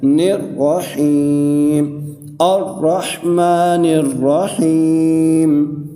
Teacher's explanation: یہاں پر بھی یا مدہ کا قاعدہ لگ رہا ہے، یا ساکن سے پہلے حرف کے نیچے زیر ہے تو ایک الف کی مقدار، ہا کو ہم کھینچ کر پڑھیں گے